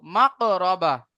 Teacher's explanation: কফের উপরে কি আছে, সাকিনা আছে, তাহলে কফকে কলকলা করে পড়বো। ঠিক আছে, কফকে কলকলা করে পড়বো।